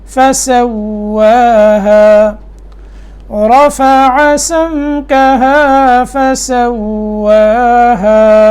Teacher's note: واو میں ہونٹ گول ہوں گے، ٹھیک ہے، اور واو کے اوپر کھڑی زبر ہے تو ایک الف کے برابر یہ لمبا ہوگا